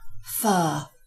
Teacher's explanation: at the end of the word it tends to assume a vowel sound